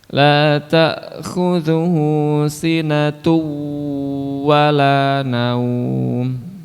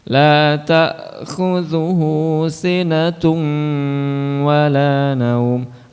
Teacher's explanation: jangan hanya idghamnya saja tapi ghunnahnya juga disertakan · Idgham memasukkan tanwin atau bunyi nun sukun pada tanwin ke huruf yang berikutnya, yaitu huruf wawu yang disertai dengan dengung. Nah, ini dengungnya jangan sampai terlewatkan. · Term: idgham bi gunnah